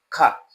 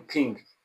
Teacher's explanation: the sound ka, which is in king, is produced at the velum. We call it velar, and it is voiceless velar plosive. It's a plosive because the release of air is sudden, but the place of articulation is the velum, and we call it velar sound.